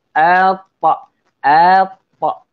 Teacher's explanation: huruf ta pula dia ada sifat qalqalah, iaitu sifat lantunan. Kan bila sebut lantunan, sebut qalqalah, maka kita kena lantunkan huruf tersebut.